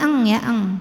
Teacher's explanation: pangkal lidah kita sudah ngangkat sehingga ee menghasilkan bunyi dengung yang besar aliran suara dari mulut sedikit